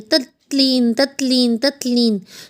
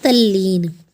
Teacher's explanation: ये त की साउंड जो है वो आधे ल में बदल जाएगी, क्योंकि त आधा है तो जब त के आगे ल व्यंजन होगा, ये त है साथ में व्यंजन जो है वो ल है, तो जब इनकी ध्वनि आपस में मिलेगी तो ये बन जाएगा तल्लीन। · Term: व्यंजन संधि